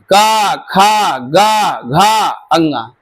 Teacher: ये पांच वर्ण है जो कंठ को स्पर्श करते हुए जाएंगे। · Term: कंठ वर्ग